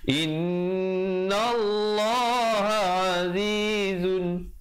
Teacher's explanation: Innallah, in, dengungkan di situ wajibul gunnah dua harakat. Jangan baca innallah, tak betul.